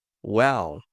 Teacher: esse L morrendo lá no céu da boca